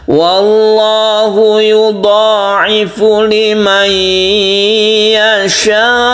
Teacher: Wallahu yudha'ifu liman yasha, ini panjangkan dulu, nun mati bertemu dengan ya, ini kita idghamkan, namanya idgham bi gunnah. Kemudian yasha ini panjang sekali sampai 3 alif ya, karena mat wajib itu kalau diwakafkan ini seperti mat adid lisukun yang 3 alif ya.